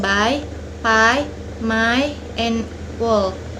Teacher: Place of articulation bilabial or two lips, produced with the two lips B, P, M, W, as in by, pie, my, and wall.